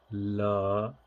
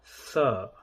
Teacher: In the dental, we have la, and the sibilant is sa.